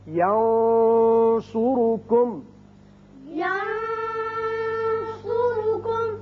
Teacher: نون پر آپ نے آواز تھوڑی سی گول کر کے موٹی سی نکالی ہے، وہ صاد کی وجہ سے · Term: اخفاء